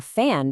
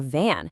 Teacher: Change the unvoiced f sound to a voiced v sound, and suddenly a fan becomes a van.